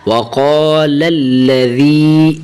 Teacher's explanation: ذال کی زیر کو یا کے ساتھ ملائیں